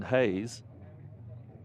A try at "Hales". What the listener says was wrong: I think it's Hales. It's got an L and an H. I think it's Hales.